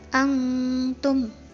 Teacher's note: Ini hukum bacaannya ikhfa. Nun sukun bertemu dengan huruf ta, dibacanya samar-samar.